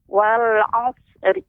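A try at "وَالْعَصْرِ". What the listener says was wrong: Wal asr. Dia pengucapan sad. Wal asr. Tambahkan ra di ujungnya.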